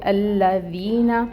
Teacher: پھر یائے ساکن سے پہلے ذال کے نیچے زیر کی حرکت، یائے مد کا رول۔ تو یہ جو ذی ہے اس کو 2 کاؤنٹس لمبا پڑھیں گے اور ذال کو نرمی سے ادا کریں گے۔ · اس کو پڑھیں گے الذین، لام کے اوپر تشدید ہے، تشدید ٹائم ٹیکنگ ہوتی ہے، ٹائم دیں گے، اور یہ جو فتحہ کی حرکت ہے اس کو 1 کاؤنٹ ادا کریں گے۔